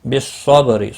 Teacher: بالصبر، صاد مستعار ہے، پر پڑھا جائے گا، با ساکن پر کلکلا ہوگا، را زیر کی وجہ سے باریک ہوگا